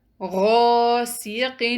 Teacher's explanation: اس word میں کون سا مد لیٹر ہے؟ الف مد، جی، اس سے پہلے زبر ہے اور ہم غین کو 2 کاؤنٹ لمبا پڑھیں گے